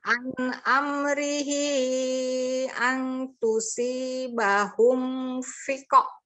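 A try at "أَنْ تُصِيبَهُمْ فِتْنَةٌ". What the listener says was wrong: Kok fiqo? Coba lihat hurufnya apa?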